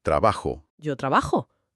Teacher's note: la terminación se cierra con un sonido muy redondo y profundo, la o. Por lo tanto, digo de forma pausada y natural, trabajo.